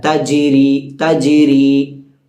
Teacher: ജീമിന് സുക്കൂൻ സംഭവിച്ചതുകൊണ്ട് അവിടെ നമ്മൾ മുഴക്കി തന്നെ ഉച്ചരിക്കണം